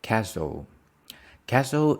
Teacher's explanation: Castle the stress is on the first syllable